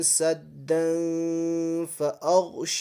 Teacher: میں سے ہے، اس لیے یہاں پر اخفائی حقیقی ہوگا اور تنوین کی آواز ناک میں چھپا کر پڑھیں گے